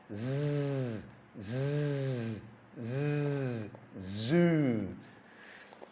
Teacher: you're putting your tongue up and blowing air across the top and your vibrating your tongue